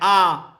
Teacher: विवृत में आता है आ, इसमें जो हमारा मुंह है वो बहुत अधिक खुल जाता है